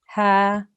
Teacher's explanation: Remember, ha is this ha here is a letter of the throat, comes from the bottom of our throat, ha, right?